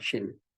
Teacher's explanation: Ketika menyebutkan huruf shin, dia katupan atau pertemuan antara wasatul lisan dengan langit-langit itu tidak sempurna, ada sedikit rongga sehingga menyebabkan angin keluar ya, ada hembusan angin. Maka itulah menjadi sifat dari shin itu adalah hamas ya.